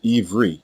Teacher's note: treats this letter as a long e vowel in his name turns the letter ba into v and makes the final letter another long e vowel the result is ivri and this is clearly wrong the word